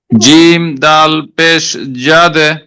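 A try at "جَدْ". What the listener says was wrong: জবর প্রথমে ঠিক ছিল, জবর ছিল প্রথমে। জিম দাল জবর জাদে,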